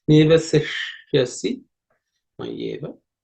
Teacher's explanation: This ishya, in the ishya, the ish is cerebral ishya, so the tip of the tongue has to be pointed towards the roof of the mouth. Nivasishyasi mayyeva.